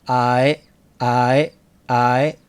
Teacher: it doesn't go as high as Japanese e e it's a little more relaxed